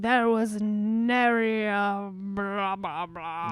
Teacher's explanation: he does like a breathy British sort of voice sometimes to sound fancy